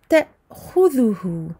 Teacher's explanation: Ici, je coupe le son. Je coupe le son, ce qui provoque en fait la fermeture soudaine des cordes vocales. C'est comme cela qu'il faut prononcer la hamza quand elle est sakina en milieu de lecture.